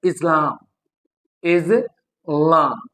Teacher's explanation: Islam s changes into z just because ये जो vowel sound है, आपको पता है कि vowel sound they are voiced. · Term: को-आर्टिकुलेशन इफेक्ट